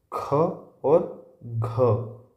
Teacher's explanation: महाप्राण व्यंजन वो व्यंजन है जिनको अधिक समय लगता है। अधिक जोर लगता है बोलने में।